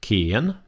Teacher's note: It's a rising tone. So I'm talking along in my normal voice, but then I go down and then I come up. I go down and then I come up.